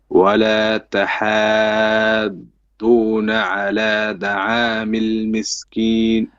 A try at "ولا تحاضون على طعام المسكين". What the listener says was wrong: على دعامي or على طعامي. طا or da. Which one is it? Well, it's not da neither. It's ta. Ta. The letter ta. That's your letter with the problem, okay?